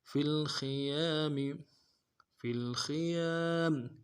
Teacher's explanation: فا کو لام کے ساتھ ملانا ہے، خا کو موٹا کریں گے، یا کے ساتھ الف مدہ ہے ایک اعتدال میں کھینچیں گے